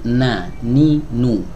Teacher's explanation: Dari ujung lidah bertemu dengan gusi ya disertai dengan ya setengah yang menyempurnakan atau nisful mukamil ya di sini gunah ya ada gunahnya di ee pangkal hidung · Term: huruf nun